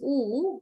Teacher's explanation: when we produce ooh our both lips are rounded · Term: lip round